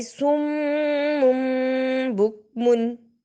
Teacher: میم مشدد بھی ہے اور میم کے اوپر چھوٹا سا اقلاب چھوٹی سی میم پڑی ہوئی ہے، اس لیے ہم نے اس کو دیر لگائی